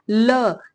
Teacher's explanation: जैसे जैसे देखिए ल का जब आप उच्चारण करेंगे तो ल के उच्चारण में क्या आएगा, ल, जीभ जो है, जीभ का अगला भाग जो है वो मसूड़े को छू रहा है और दोनों तरफ से जो है वायु निकल जा रही है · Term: पार्श्विक वर्ड